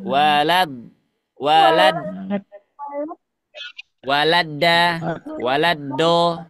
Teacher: kalau Dal dia bukan di sisi lidah tapi ujung lidah mengarah ke mana Ke gigi seri atas gigii atas di pertemuan antara gusi dengan tempat tumbuhnya gigii atas